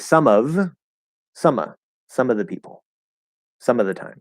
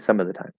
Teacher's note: we're not going to enunciate that V sound and it's just going to drop. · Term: drop the V sound